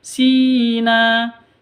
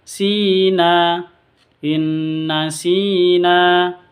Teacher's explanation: masuk ke Nun yang kedua disertai dengung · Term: idgham bighhunah